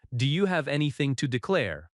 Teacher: Declare has stress on the second syllable.